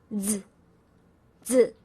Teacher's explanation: Z in Pinyin is pronounced as z, z. It sounds very similar to the DS as in kids.